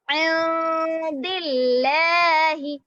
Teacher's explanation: نون ساکن کے بعد حروف اخفا ہے تو نون کی آواز کو ناک میں چھپائیں گے، اسی لیے یہاں پر نون کی آواز کو ناک میں چھپا رہے ہیں.